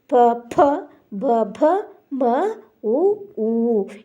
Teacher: ಪ ವರ್ಗದ ಅಕ್ಷರಗಳು ತುಟಿಗಳ ಸಹಾಯದಿಂದ ಉಚ್ಚರಿಸಲು ಪಡುವುದರಿಂದ ಅವು ಓಷಟಿ ಅಕ್ಷರಗಳು